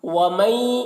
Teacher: वमन नून में यहाँ पर इदगाम नाकिस हो रहा है, नून में इदगाम नाकिस हो रहा है।